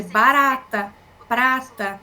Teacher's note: O TEP é um som de barata prata, então é esse R mais marcado.